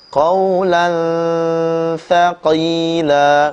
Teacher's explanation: ujung lidah sedikit keluar dan menempel pada ujung daripada gigi seri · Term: huruf tsa